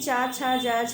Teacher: चा, छा, जा, झा सेकेंड वर्ग के हैं, तो पहला वर्ग जो है का वर्ग, उसका हम कंठ से करते हैं, तो दूसरे वाले का तालव्य से